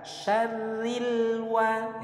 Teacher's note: alif lam qamariyah bertemu dengan salah satu huruf qamariyah yaitu wawu, maka lamnya harus terbaca izhar jelas